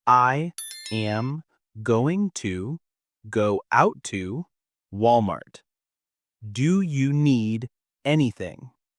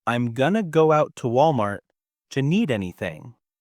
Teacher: I replaced I am going to with I'm going to and I connected Walmart and do you into a single phrase. That t at the end of Walmart and the duh at the start of do you, they combine to create that new smooth sound.